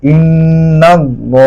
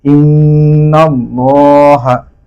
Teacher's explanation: আল্লাহর শব্দে লামের পূর্বে যদি জবার বা পেশ হয় তাহলে আল্লাহর শব্দের লাম কিন্তু পুর হবে।